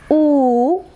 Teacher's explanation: the shape of the lip, it is rounded, and we use the back part of the tongue against the soft palate, and again the height, it is close, ഉയരത്തിലായിരിക്കും.